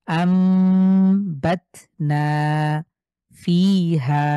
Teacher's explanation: নুন সাকিন অথবা তানভীনের পরে যদি বা থাকে তাহলে এই নুন সাকিন টাকে এই ছোট্ট মিম দ্বারা পরিবর্তন করে পড়বো · দেখেন হামজা নুন জবর আন আছে ঠিক এরপরে রয়েছে বা তাহলে এই নুন সাকিন কে আমরা এই মিমের সাথে পরিবর্তন করে পড়বো এবং গুন্না কিন্তু করতে হবে গুন্না মাস্ট আমরা গুন্নার নিয়মই পড়ছি আম্বাদনা ফিহা আবার আম্বাতনা ফিহা